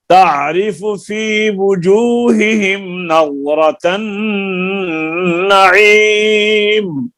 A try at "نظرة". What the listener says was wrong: نظرہ کے را کو لمبا نہیں کرنا.